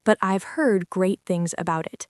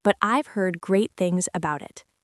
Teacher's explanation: The words heard, great, and things all link together smoothly.